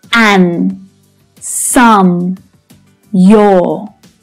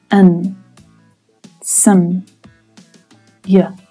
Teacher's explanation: when these words are unstressed and spoken naturally in a sentence, they often reduce right down to the schwa sound